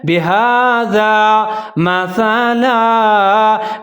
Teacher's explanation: हा के ऊपर खड़ा ज़बर है, इसको एक अलिफ के बराबर लंबा पढ़ेंगे और हा को हा मोटा पढ़ना है।